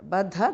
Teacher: Baddha, the second dha is mahapranah.